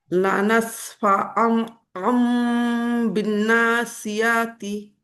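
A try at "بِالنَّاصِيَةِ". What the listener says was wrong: নাসিয়াতি একসাথে। জি সিয়া বলে টান দিবেন না, বিন নাসিয়াতি।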